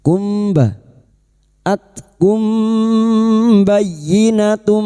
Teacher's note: Mim sukun bertemu ba, biasanya mim sukun dibaca jelas, kali ini bertemu ba, mim sukun dibaca samar dan mendengung selama 3 harokat. Kumba, ikfa syafawi, samar di bibir.